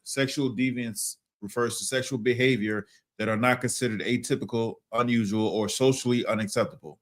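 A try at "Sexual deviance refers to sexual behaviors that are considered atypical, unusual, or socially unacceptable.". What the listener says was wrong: That are considered atypical. You said are not. Slow it down, man. Read it again.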